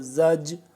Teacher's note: سختی سے پڑھیں گے جیسے سیٹی کی سی آواز سے، زا جیم زبر زج، را زبر را، زج را، جیم ہے نا، اس پہ اس کو جیم سختی سے ہی پڑھیں گے۔